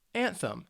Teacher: it's two syllables and the stress is on that first syllable